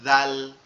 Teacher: জাল যেটা, এটা হচ্ছে কি হবে, পাতলা আওয়াজ হবে, জাল, জিহ্বার আগা সামনের উপরের দুই দাঁতের আগার সঙ্গে লাগবে